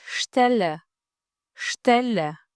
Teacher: Kombinimi i dy bashkëtingëlloreve st e lexojmë sht